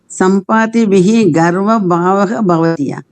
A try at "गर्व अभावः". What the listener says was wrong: गर्व अभावः. There is a dirgha sandhi here. Garva bhava. If it is garva bhava, then yes, it's wrong. It is garva abhava.